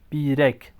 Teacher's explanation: Biroz, bakın İ uzadı, O da uzundur. Birek, bakın E kısa, İ uzun.